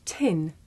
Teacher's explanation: Did you notice how the puff of air at the beginning of tin makes the paper move?